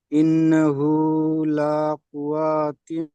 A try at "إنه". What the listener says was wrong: ইন্নাহু, টান হবে না।